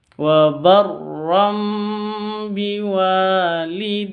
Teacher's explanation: Wa barram biwalidati. Biwa, wanya panjang 2 harokat karena ada alif diawali dengan fathah.